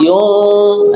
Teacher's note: nun mati lagi ketemu shad yun. Nah di sini namanya ikhfa hakiki